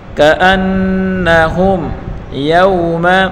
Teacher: میم ساکن کے بعد اظہار کا حرف یا آ رہا ہے تو اس میم کو ظاہر کر کے پڑھیں گے